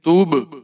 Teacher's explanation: تا کے اوپر پیش ہے، با ساکن ہے، یہاں پر آپ قلقلہ کریں گے